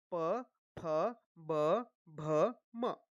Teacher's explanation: जब हम प वर्ग बोलते हैं तो हमारे ओठ जो है वो दोनों ओठ जो है वो मिलते हैं। देखिए प ठ ब भ म यानी इसका उच्चारण स्थान हो गया प वर्ग का ओष्ठ।